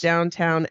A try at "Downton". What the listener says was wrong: And it's Downton. It's not downtown. Downton. Literally, it's missing a W.